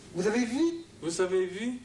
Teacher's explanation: Donc, ça veut dire que la courbe intonative montante ne suffit pas. Alors, il faut associer intonation montante et prononciation déformée vers le I